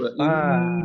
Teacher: Jadi wa inna naknya dua harokat ya.